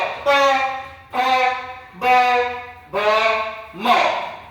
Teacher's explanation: ओठांचा वापर करून आपण या शब्दांचा उच्चार करतो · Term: ओष्ट्य